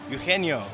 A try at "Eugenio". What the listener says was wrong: The G is silent.